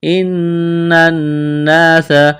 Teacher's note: نون مشدد پر غنہ کریں گے، آواز ناک میں چھپائیں گے